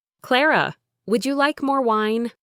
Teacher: voice rose at the end, a clear, polite question.